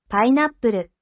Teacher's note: So you don't pronounce the tsu here. It's a silent pause that places extra emphasis on the consonant in the next katakana. So this here, normally it's fu, but because of the handakuten circle here, it's pu. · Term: sokuon